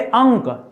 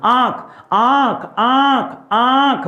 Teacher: आंख में नाक के साथ-साथ मुंह से भी हवा निकलती है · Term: अनुनासिक